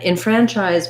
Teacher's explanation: a syllabic n so i almost have no vowel there